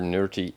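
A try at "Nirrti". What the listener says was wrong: You keep saying nerdy. That's not how Teal'c pronounced it. I think he used an r.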